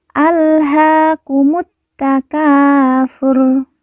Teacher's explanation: RO di ujung kita sukunkan atau kita matikan karena wakaf atau berhenti